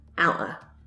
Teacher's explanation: you might not even pronounce a T or a D. We just have the schwa sound